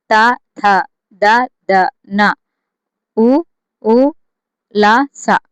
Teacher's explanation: దంతాల నుండి పుట్టినవి దంత్యాలు